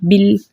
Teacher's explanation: یہ با کے نیچے زیر ہے، زیر کو ہم لام سے ملا کر پڑھیں گے، جیسے بل، اور لام کو اس کے مخرج پہ روک کر پڑھیں گے، بالکل بھی ہم نے اس کو جو ہے کھینچنا نہیں ہے اور ہلانا بھی نہیں ہے